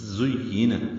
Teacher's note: زا کو تیز صفیر کی آواز سے ادا، زُيِّنَ یا سے ملانا ہے، جلدی پڑھنا ہے۔